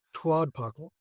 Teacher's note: there's a little puff of air after the t because it's like you're spitting it